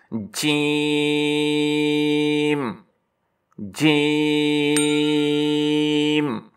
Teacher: जुबान का दरमियान और इसके मुकाबल ऊपर का सख्त तालू जब जुबान ऊपर तालू को लगती है तो इसे सख्ती से जीम पढ़ा जाता है।